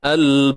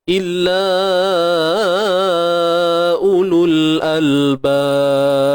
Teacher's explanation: pada ba ni jangan lupa dia ada sifat lantunan. Ni baru betul lantunan.